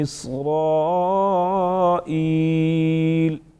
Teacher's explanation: اسرائیل الف مدہ ساتھ میں بڑا مد 5 سے 6 الف کے برابر کھینچ سکتے ہیں